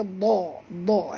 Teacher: Dha ni pun tebal, jangan baca da tapi baca dha